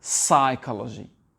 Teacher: Le P n'est pas prononcé.